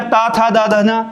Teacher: त, थ, द, ध ये दंत होते हैं